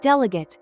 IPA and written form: ˈdel.ə.ɡeɪt (delegate)